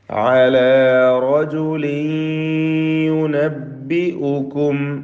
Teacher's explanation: തൻവീൻ സാക്കിൻ ഇദ്ഗാം ബിഗുന്ന ചെയ്തുകൊണ്ട് യായിലേക്ക് ഭാഗികമായി ലയിപ്പിച്ച് മണിക്കണം. യുനബ്ബിഉക്കും സാക്കിന മീമിന് ഇൽഹാർ ഷഫവി നൽകേണ്ടതാണ്.